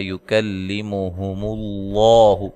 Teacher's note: لفظ اللہ کو موٹا ادا کرنا ہے، اس سے پہلے حرف پر پیش ہے